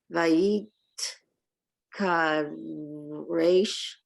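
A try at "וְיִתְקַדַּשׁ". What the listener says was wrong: No, it's a Dalet.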